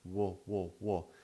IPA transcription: w